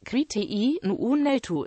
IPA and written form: kɾiʃti'ɐnu ʁuˈnaɫðu (Cristiano Ronaldo)